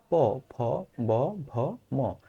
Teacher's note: দেখো, ফুসফুস হতে তাড়িত বাতাস কণ্ঠনালীর ভিতর দিয়ে প্রবেশের সময় ঠোঁটের দুই ঠোঁটের উপরের পাটি ঠোঁট এবং নিচের পাটি ঠোঁট একত্র হয়ে যে ধ্বনিগুলো উচ্চারণ হয় সেটাকে বলা হয় ওষ্ঠ ধ্বনি